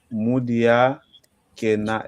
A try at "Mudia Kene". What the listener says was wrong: Mudia Kene. Exato, mas na pronúncia sai aquele último A do Kena. Pronto, vai engolir o E, tá vendo?